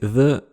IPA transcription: ð